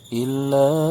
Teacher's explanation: illa, ini dibaca panjang 4 harokat.